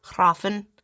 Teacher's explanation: And the F is supposed to be kind of like a V